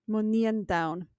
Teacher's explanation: the N at the end of nian is a dental, and then it can't lenite the D in down. So it's not just dentals, but that's the most common one.